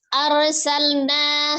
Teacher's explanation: rnya dibaca tebal kemudian lamnya juga mengalir